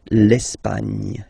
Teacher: don't insist on the final E because basically it's not pronounced.